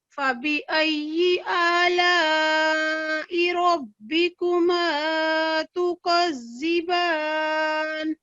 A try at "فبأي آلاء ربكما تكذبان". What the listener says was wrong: اور یہاں پہ تو کی آواز آنی چاہیے, تا کی آواز آ رہی تھی, تھوڑا اس میں فرق ہونا چاہیے, ٹھیک ہے. یہ موٹا پڑے جانے والا حروف ہے.